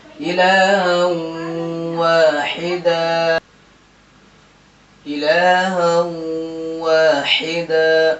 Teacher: تو یہاں دو زبر نہ پڑھ کر کے ایک زبر پڑھیں گے، دن سے دا پڑھیں گے. تو یہاں ادغام مع الغنہ ہوگا. کیونکہ تنوین کے بعد حروف یومن میں سے واو آ رہا ہے.